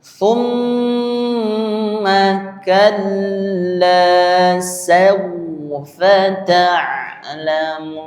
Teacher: Tum ini ada gunahnya. Panjangkan mim dan nun di sini.